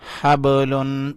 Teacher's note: با کے اوپر کلکلہ کیا یعنی با کو اٹھایا